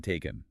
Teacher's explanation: or the filler sound. It's the shortest, least distinct, unstressed vowel sound in English. Think of the A in about, or the E in taken. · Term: schwa sound